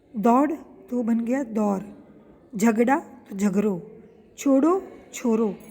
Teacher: यहाँ ड के स्थान पर र उच्चारण होता है